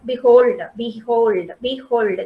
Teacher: So here we call it as iamb because we have an unstressed syllable followed by a stressed syllable